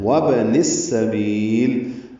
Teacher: نون کو سین سے ملا دیں گے ملانے کی صورت میں